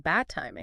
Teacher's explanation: the d just gets swallowed up